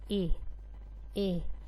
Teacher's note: तो ए की जब हम लिप्स को देखें, अगर ए को हम जिस तरह पढ़ते हैं तो ए यानी इसकी ज़बान थोड़ी सी बाहर आएगी और इसके लिप्स जो हैं वो खुल जाएंगे, यानी दोनों तरफ से लिप्स खुल जाएंगे